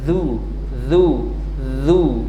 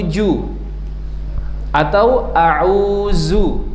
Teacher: dari ujung lidah bertemu dengan gigi seri depan